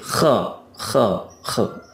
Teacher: kalau kho, kho ini biasanya kita merasakan ada getaran di ujung tenggorokan kita. Tetapi tidak boleh juga berlebihan seperti kayak apa ya, buang dahak itu, kho, itu kho, gitu.